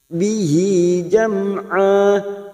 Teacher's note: mim sukun yang bertemu ain, kita baca jelas tanpa mendengung. Jam'a mad iwad sama 2 harokat kita panjangkan.